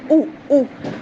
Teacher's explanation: پھر او، حمزہ پیش او، حمزہ کی صفت ہم پڑھ چکے ہیں، حمزہ بہت سختی سے ادا ہوتا ہے، اس کی بہت پرومیننٹ ساؤنڈ ہوتی ہے او او، اور اسپیشلی جب حمزہ مد کے بعد آ رہا ہو۔